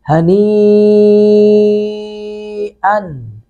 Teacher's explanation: मद्दा के बाद हमज़ा उसी कलिमा उसी लफ्ज़ के अंदर है, तो यहाँ पे मद्दे मुत्तसिल बन रही है , हनी अन। हमज़ा पर तनवीन, उन तनवीन के बाद मीम